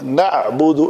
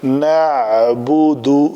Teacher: عین کے اوپر عین کی ادائیگی ساکن کر کے کرنی ہے، جھٹکا نہیں دینا. نعبد ایسے نہیں کرنا، یہ بڑی آسانی سے ہوگا نعبد.